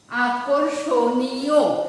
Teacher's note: র এর পূর্ণ উচ্চারণ হচ্ছে না, অর্ধ উচ্চারণ হচ্ছে